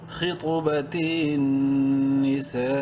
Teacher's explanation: 5 الف کے برابر لمبا کر سکتے ہیں سین کو